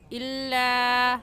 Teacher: लाम अलिफ ला को खींचेंगे क्योंकि अलिफ से पहले ज़बर आ गया, तो अलिफ मद्दा, और अलिफ मद्दा को एक अलिफ की मिकदार खींच कर पढ़ते हैं।